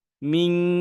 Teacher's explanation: আমার যেই গুন্নাহ মোটা হওয়ার কথা সেই গুন্নাহ চিকন হচ্ছে